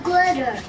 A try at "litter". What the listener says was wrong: the litter say lit lit lit not glit say lit lit say it again lit say it fast now